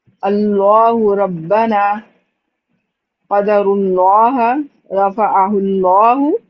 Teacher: سب سے زیادہ تفخیم جو پائی جاتی ہے وہ لام جلالہ میں پائی جاتی ہے، حروف مستعلیہ سے بھی زیادہ.